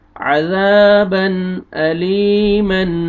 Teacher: تنوین 2 زبر ہے، اس کے بعد حمزہ آ رہا ہے، یہاں پہ اظہار کریں گے